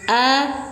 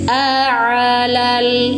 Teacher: bedakan kalau hamzah tenggorokan bawah, kalau ain tenggorokan tengah. A, bedanya kalau ini suara tertahan, tidak bisa mengalir a Gak bisa dialirkan, jadi dia tertahan.